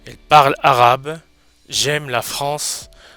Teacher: Alors, comme vous pouvez le constater, les lettres finales ne se prononcent pas en français. Le E final, qu'on appelle E muet, il n'est pas prononcé non plus. En français, c'est un E qui ne se prononce jamais.